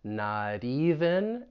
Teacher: I'm going to use a flap T so it's going to sound like a d that's going to get linked